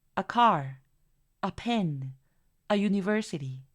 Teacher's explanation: al acentuar o colocar la mayor fuerza de voz a los sustantivos y no a los artículos, hace que los sonidos se reduzcan. Es por eso que estoy utilizando la schwa. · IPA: /ə/